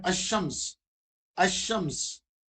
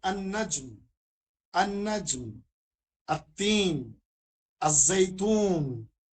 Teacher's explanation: ال کا لام حرف شمسی میں اس کا ادغام ہو جاتا ہے، یعنی پڑھتے وقت لام کی بجائے حرف شمسی ہی کا تلفظ ہوتا ہے. ایسی صورت میں لام پر جزم نہیں لکھی جاتی، بلکہ حرف شمسی پر تشدید لکھی جاتی ہے.